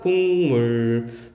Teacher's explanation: 발음하면은 기억이 이응으로 바뀐다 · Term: 비음화